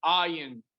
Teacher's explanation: the way you make the ayin sound is you have to actually go deeper in your vocal cord downwards.